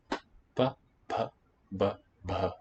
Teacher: It's the plain one, and then the voiceless aspirate, then the unaspirated voiced, and then the murmured, and then the nasal.